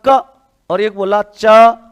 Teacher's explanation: च बोलने में पहले नीचे फिर जीवा ऊपर जाती है, इसलिए इसको क्या कहते हैं? स्पर्श संघर्षी।